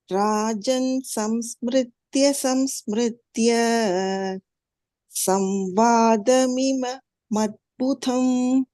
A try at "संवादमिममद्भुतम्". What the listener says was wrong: மிமமத்புதம் அங்க மகாபிராணः இல்ல ஃபிக்ஸ் பண்ணிக்கோங்க கேசவார்ஜுனயோः புண்ணியம் ஹ்ருஷ்யாமி ச முहुर्मुहुः